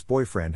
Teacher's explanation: syllable indicates where the accent of stress is in this case the accent is in the first syllable corresponding to boy